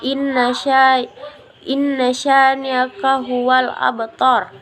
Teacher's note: qalqalah sugra artinya kecil dalam bahasa Arab. Dengan demikian pantulan bacaannya lebih ringan